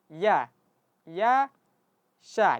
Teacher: Jadi kita baca auzubillahi minasya sya sya bukan sya tapi auzubillahi minasya kusyi. Jadi huruf syin satu makhraj dengan huruf ya.